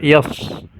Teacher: Shad adalah termasuk rokhawah. Jadi kita baca yas. Ada suara yang mengalir.